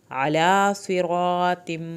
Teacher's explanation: علی صراط، علی عین کو حلق سے پڑھیں، کھڑی زبر ادا کریں. صاد کو پر کرنا ہے. را کو پر کرنا ہے